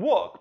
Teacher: The upcoming [ʊ] makes the [l] go more towards [w], since it’s already far back and almost [w]-ish already. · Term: gliding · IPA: [wʊk]